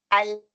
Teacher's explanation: اب یہ دیکھیں لام کا مخرج، کیونکہ لام کا جو مخرج نا آگے سے لگا ہوا ہے، اوپر والے جو دانت ہیں، اوپر والے دانتوں کو دیکھیں، میری ٹپ جو ہے اوپر والے دانتوں کی ایج کو لگ رہی ہے اور سائڈوں سے مخرج باہر آ رہا ہے